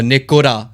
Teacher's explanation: it's more of a D sound instead of an R sound, like a D, kind of rolls your tongue a little bit better than saying an R.